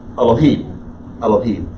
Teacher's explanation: Just make sure you put that emphasis on the last syllable and say the first syllable fast, and you'll figure out why it's really not vocalized.